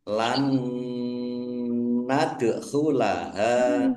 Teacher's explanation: Wa inna lan nadkulaha nun fathah mad thobi'i panjang dua harakat. Nun sukun bertemu dengan huruf nun. Bacaan idghamunah. Masuk dengan mendengung.